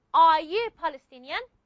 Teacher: My voice is actually going up. This is inonation. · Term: intonation